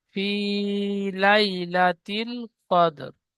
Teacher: রয়ের বারিক নিচে জের এসেছে, আয়াতের শেষে থামবো, তাই জেরকে বাদ দিয়ে সাকিন ধরে আগের অক্ষরের সাথে মিলিয়ে পড়বো।